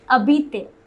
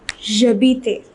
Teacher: though it begins with H, it is pronounced habiter. The H is silent. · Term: H mute